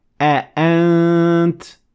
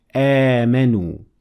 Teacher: we have Hamza followed by Alif, and for this reason, I'll have to extend it a little bit and say آمنوا.